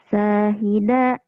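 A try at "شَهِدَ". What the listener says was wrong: Nggak ada yang panjang. Nggak ada yang panjang. Syahida.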